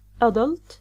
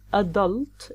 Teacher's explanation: it's a noun. The stress is on the first syllable 'Adult gives the British pronunciation while the stress on the second syllable a'DULT gives the American pronunciation.